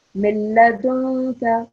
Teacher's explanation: the noon sound here should disappear. It should not be heard.